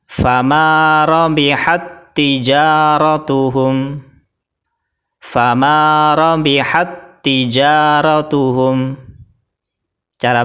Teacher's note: fathah kalau di sini tak yang kedua harokatnya adalah kasrah jadi cara bacanya tak pertama dimasukkan ke huruf tak yang kedua sambil ditekan · Jadi tak yang pertama atau huruf ta itu ada sifat mahamesnya ya. Sifat hames itu ketika mengucapkan ta ada nafas yang keluar atau ada udara yang keluar. Tapi karena di sini hukumnya adalah idgham mutamatsilain, jadi langsung dimasukkan ke ta yang kedua.